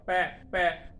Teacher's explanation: अगर मैं एयर को रोक के दोनों लिप्स को बंद करके निकालूंगा तो पै का साउंड प्रोड्यूस होगा